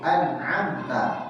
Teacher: Izhar harus jelas tanpa boleh qalqalah. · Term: izhar halqi